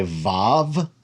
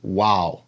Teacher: most modern Hebrew speakers say VAV and ancient Hebrew it was pronounced wow so it's either a v sound or a w sound in